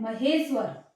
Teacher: अब ये शब्द बना महेश्वर, जो ये वाला ह, मतलब इसमें आ का साउंड था और ये ई, ये दोनों वर्ण, इसका वर्ण और इसका वर्ण मिलके इनमें ये जो परिवर्तन आता है यहाँ पर, मतलब ये आ और ई मिलके ए बन रहे हैं, तो इसी को बोलते हैं संधि।